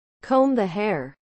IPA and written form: koum ðə heə (Comb the hair)